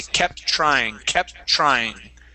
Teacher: we can combine those T's and only pronounce it once. We say kept trying, kept trying.